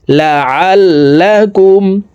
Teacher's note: আইন হরফের উচ্চারণ হালকের মধ্যখান থেকে পড়তে হবে